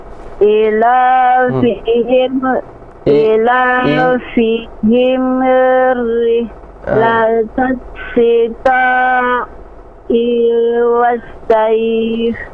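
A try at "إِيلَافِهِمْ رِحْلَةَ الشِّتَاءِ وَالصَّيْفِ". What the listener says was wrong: I dua harokat. Ila fihim. Sebentar. Ila fihim. Nah, I-nya dua harokat.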